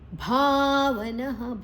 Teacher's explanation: ಭಾ ಮಹಾಪ್ರಾಣ ದೀರ್ಘಾಕ್ಷರ. ನ ಆದ ನಂತರ ವಿಸರ್ಗದ ಉಚ್ಚಾರಣೆ ಹ